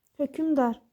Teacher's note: Məsələ hökmdar yazırıq. Tələffüzdə qoşa samitlərin arasına sait daxil olur.